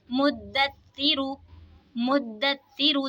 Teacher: दाल में क़लक़ला होगा, तशदीद वाले हुरूफ को जमाओं के साथ पढ़ेंगे, रा पे पेश है तो रा को मोटा पढ़ेंगे।